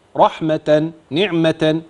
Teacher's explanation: التاء المربوطه تبدل عند الوقف هاء